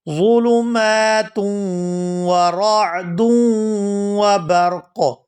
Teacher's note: ادا کریں گے، فیہ ظلمات، ظلمات، تا دو پیش واو توں، یہاں تنوین کا واو مشدد کے ساتھ ادغام کریں گے اور غنہ کریں گے